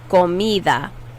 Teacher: Notice how the D sound is not a hard D. It's a really, really soft, airy D.